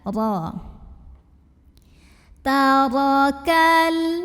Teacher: Cara membacanya ditebalkan, pangkal lidah dinaikkan. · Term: tafkhim